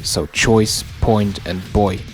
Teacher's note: the oy and choice point or boy gets fronted to oi · The A in late, frame, or spacey gets reduced to E, so late, frame, and spacey. The oi in choice, point, or boy gets fronted to oi